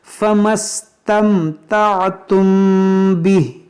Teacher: मीम साकिन के बाद बा है, तो यहाँ पर क्या करेंगे, इख्फाए शफवी, यानी यहाँ पर भी गुन्ना हम करेंगे।